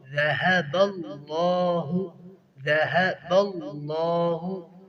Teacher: لفظ اللہ کو موٹا پڑھیں گے۔ بنورہم وترکہم، وترکہم، وترکہ، تا بھی باریک ہے اور را موٹا ہے، را کو موٹا کرنا ہے کیونکہ اس کے اوپر فتح ہے، اور آگے کاف، کاف بھی باریک ہے تو اس کی بھی احتیاط کرنی ہوگی۔